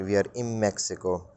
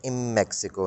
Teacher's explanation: in mexico clearly the n sound uh gets very very diminished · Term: assimilation